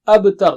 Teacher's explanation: There is qalqala on ba.